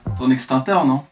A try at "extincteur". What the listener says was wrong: Ton extinct quoi? Il y a un C, extincteur. Non, t'as dit extincteur. T'as dit extincteur.